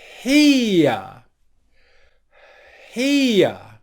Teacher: even though it is a short english vowel sound we want to make it a little bit longer as we transition to the schwa sound which is the second part of that diphthong so here's the